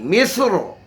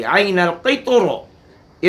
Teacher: इस मुस्तालिया के साकिन हर्फ की वजह से रा मोटी पढ़ी जाएगी। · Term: तफ़ख़ीम